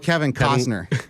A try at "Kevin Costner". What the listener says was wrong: Cosner? Isn't there a T in there somewhere?